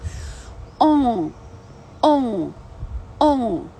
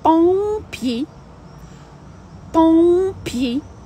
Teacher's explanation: Це О з носом. О, О, О, так? Дві комбінації ОМ і ОН.